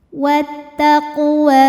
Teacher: Huruf qaf disebut dengan qalqalah sughra karena sukunnya sukun asli dan ada di tengah bacaan. Dibacanya dipantulkan dengan pantulan yang kecil. · Ini hukumnya adalah mad tabi'i muqaddar karena huruf waw berbaris fathah panjang. Cara bacanya panjang 2 harokat.